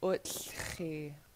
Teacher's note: you're starting with the TL, all the air is kind of bubbling out the sides of your cheeks